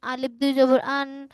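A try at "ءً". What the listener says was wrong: বলা যাবে না, ওটাকে আর আলিফের উপরে নিচে কিছু আসলে সেটাকে এই যে হামজা।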